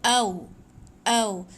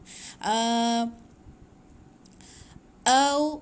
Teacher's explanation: Jangan jadi ain sebab hamzah dengan ain ni dia memang sebelah-sebelah dia punya makhraj.